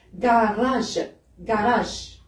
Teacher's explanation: le R devient le R roulé